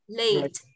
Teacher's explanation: Nhấn mạnh nhưng không nghĩa là chúng ta nhấn mạnh thành dấu sắc là thành lết như chúng ta vẫn đọc.